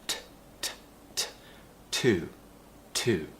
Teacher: the tongue Rises to the top of the mouth t t and we create some pressure and we release it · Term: the T sound, T sound